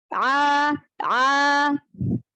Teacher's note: huruf ain kan dari tengah tenggorokan ya. Makhrajnya ya dari tengah tenggorokan.